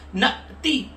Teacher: हमजा को झटके से पढ़ेंगे